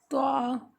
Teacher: یہ طا ہے، تا نہیں بلکہ طا۔ زبان کی نوک یا اوپر کے جو سامنے کے دانت ہیں ان کی جڑ سے لگے گی تو طا ادا ہوگا